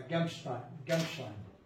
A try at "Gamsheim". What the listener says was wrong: Gamsheim, il n'y a pas de T.